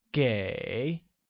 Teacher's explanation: pronounced with a falling rising tone